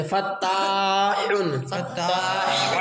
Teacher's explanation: حا دو پیش حن فتاح فتاح ہاں بڑا حا کہاں سے ادا ہوتا ہے درمیان حلق سے